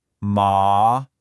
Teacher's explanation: Ma, that means mother. Next, the second tone. It rises kind of like you're asking a question